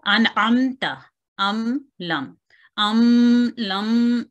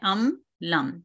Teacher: मीम की एक कुदरती तौर पर एक जो नेजल साउंड है वो निकलेगी लेकिन उसको हम खींच के लंबा नहीं करेंगे। सो अन अमता अम लम ऐसे नहीं करना, ये एक गलत तरीक है, उससे हमने परहेज करना है।